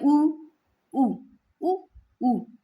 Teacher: दोनों होठ गोल होते हैं ना अपने